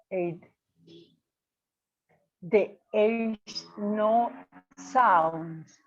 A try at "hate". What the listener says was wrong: No, you do pronounce the H. hate. there's a little bit of aspiración. little bit of aspiration.